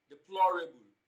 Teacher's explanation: third syllable option b deplorable now when you look at deplorable the stress also falls on the second syllable from the beginning of the word and the third syllable from the end